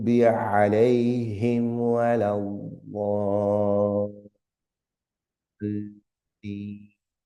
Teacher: elongating the sound to about 5 or 6 times